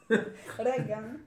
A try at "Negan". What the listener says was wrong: Negan. Era con la N. Era Negan.